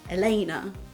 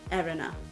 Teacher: So instead of Elena, where the emphasis is in the middle, it was just Erena.